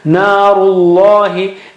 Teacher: In that case, it is almost automatic, because ru makes your mouth round, lips round, so naturally the lam that follows will be thicker.